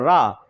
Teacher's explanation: रा जो है इसका उच्चारण कहां से होता है मूर्धा से होता है